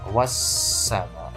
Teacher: dibaca Idgham Syamsiah atau melebur masuk ke huruf berikutnya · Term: alif lam syamsiyah